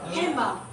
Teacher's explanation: most American English speakers do not pronounce the D in handbag. So the D, they don't pronounce the D. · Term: deletion